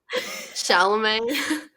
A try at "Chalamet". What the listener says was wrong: It's Chalamet. There's no R.